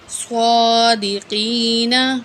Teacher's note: صاد کو موٹا کر کے پڑھیں گے اور 1 الف کے برابر کھینچ کے پڑھیں گے، ٹھیک ہے۔ صادقین، تو وقف کریں گے، نون ساکن ہو جائے گا۔